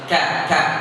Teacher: Karena kaf kan di luar sini, di bawah daripada qaf. Walaupun sama-sama di aqsal lisan, tapi kan di bawah daripada huruf qaf sehingga dia tidak tebal.